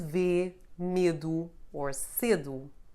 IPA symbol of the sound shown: e